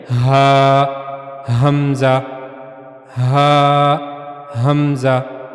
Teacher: गले का जो सबसे निचला हिस्सा है सीने की तरफ वाला वहां से आवाज निकलनी चाहिए।